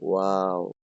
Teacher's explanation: দুই ঠোট গোল করে সামান্য খোলা রেখে উচ্চারিত হয়।